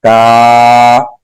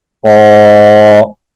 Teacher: کاف باریک پڑھا جاتا ہے، قوف موٹا پڑھا جاتا ہے۔